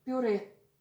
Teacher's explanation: We do not palatalize r in this word.